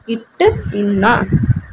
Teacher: நாவின் நுனி அன்னத்தின் நுனியை வந்து பொருந்துதல்